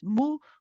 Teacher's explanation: So relax the lips when you start saying the ghunna. At the beginning, you say mu, circle the lips. And then when you start saying the ghunna, relax the lips.